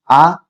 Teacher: अ जो है वह कंठ से आ कंठ से